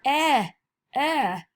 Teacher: your mouth's open a little bit, but your tongue's forward. E is for eh.